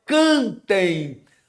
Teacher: Porque a vogal forte é a Penúltima, a paroxítona